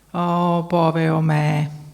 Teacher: c'è anche la prosodia, il profilo melodico, vedete, discendente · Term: prosodia negativa